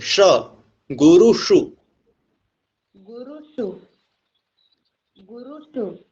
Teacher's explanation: और इस श पे जीभ मोड़ देनी है